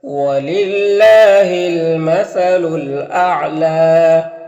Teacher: یہاں پر اللہ کے لام سے پہلے لام کے نیچے زیر ہے تو اللہ کے لام کو باریک پڑھیں گے